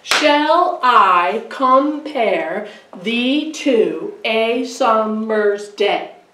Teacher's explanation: what's iambic unstressed stressed unstressed stressed · There are five poetic feet, foot, in this line because we're doing iambic. And it's unstressed and stressed, unstressed and stressed, unstressed and stressed, unstressed and stressed, unstressed and stressed. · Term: iambic pentameter